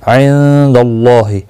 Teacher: नून साकिन के बाद हुरूफ इख्फा का दाल आया, इख्फा हकीकी होगा